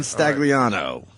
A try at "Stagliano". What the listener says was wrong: No, the G is silent. It is, right? It is. Stagliano.